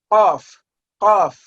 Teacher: तो आपकी ज़बान का जो बिल्कुल आखिरी हिस्सा है अंदर की तरफ वाला, वो आपके हलक से टकरा के इसको अदा करेगा